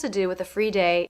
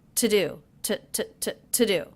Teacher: I notice with the word to, I am reducing that to the schwa sound.